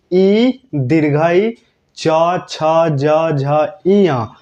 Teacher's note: इ दीर्घ ई च छ ज झ ञ का उच्चारण स्थान क्या होता है तो आप लोगों को बताना है तालु